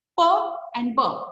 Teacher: closed or stopped behind our lips and suddenly released and therefore we can hear a burst and therefore that is known as closing sounds or stop sounds